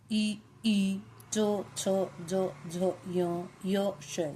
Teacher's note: जब हम बोलते हैं तो ध्वनि तालु से आती है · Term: तालव्य वर्ण